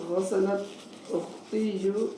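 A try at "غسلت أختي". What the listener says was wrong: بس اختی, ہاں اختیو نہیں کہیں گے, بس اختی ایسا پڑھیے اس کو, ہے نا.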